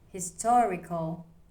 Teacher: The stress is on to.